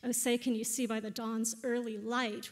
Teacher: where early is the weak part, light is the strong part